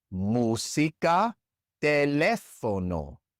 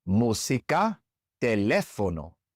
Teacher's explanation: In these two words, we also stress the third to last syllable